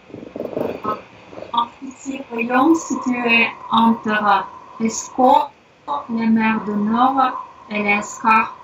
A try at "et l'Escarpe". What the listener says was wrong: Donc c'est et l'Escarpe, c'est pas elle. On dit pas elle l'Escarpe, c'est et l'Escarpe et là.